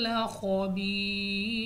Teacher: کھول کر پڑھنا ہے، یا ساکن سے پہلے زیر یا مدہ، وقف کی صورت میں ہمارے پاس یہ مد عارض بن جائے گی